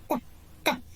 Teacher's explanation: Вот как мы произносим букву Т, надавливаем кончик языка к основанию зубов верхних.